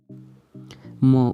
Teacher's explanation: म उच्चारण प्रयत्नको आधारमा नासिक्य हो। प्राणत्वको आधारमा अल्प प्राण हो।